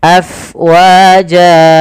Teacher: alirkan nafasnya karena fa itu harus ada angin yang kita keluarkan karena dia sifatnya hams, mengalirnya nafas.